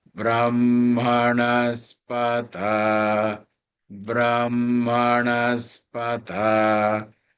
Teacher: Notice there is no change in intonation at all except for the ta.